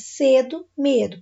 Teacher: paroxítona e penúltima sílaba tônica